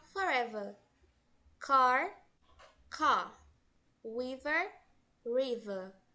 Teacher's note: reparem que eles não pronunciam o final, aquele R bem forte, né? Eles pronunciam como se fosse a letra A. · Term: pronúncia do R